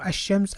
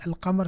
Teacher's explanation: The shadda on the shamsiyya letters, they're there for phonological reasons. Just to show you that you shouldn't pronounce the lam